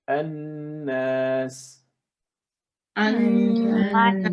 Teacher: we're using the tip of the tongue to pronounce the n